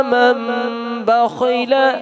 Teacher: نون ساکن کے بعد جب با آ جائے تو اس میں میم کی آواز پیدا ہو جاتی ہے